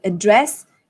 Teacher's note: address contains two syllables address and then dress is the one that you stress